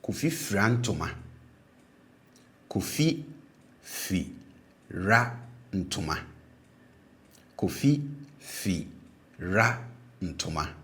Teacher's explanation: And for the habitual, like I mentioned, the initial syllable tends to be pronounced with a low tone, and then the remaining syllable will be pronounced with a high tone